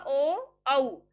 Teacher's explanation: कंठ से आवाज आई और होठों की शेप में भी चेंज हुआ, ओ औ, होठ भी एक्टिव है और कंठ से आवाज आ रही है। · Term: कंठ ओष्ठ